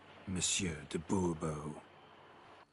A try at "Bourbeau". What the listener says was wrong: The emphasis falls on the last syllable. Bourbeau?